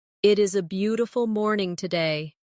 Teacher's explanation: Feel the flow from beautiful to morning. There's a tiny connection there where the sound moves smoothly without a pause.